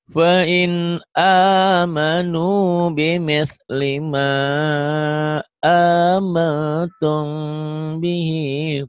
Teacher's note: mimnya ditahan juga sama ikhfa sapawi